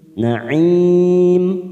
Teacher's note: Na'im mat arid li sukun 4 harokat kita panjangkan.